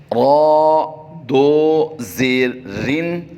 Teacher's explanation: جب دو زیر ساتھ لگا دیں گے ہجے کرنے کے بعد پھر اس کی آواز باریک ہو جائے گی